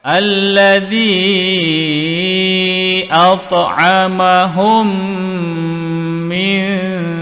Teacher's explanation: Kita namakan sebagai idgham mislain syafawi. Mim mati berjumpa mim. Dengung 2 harakat.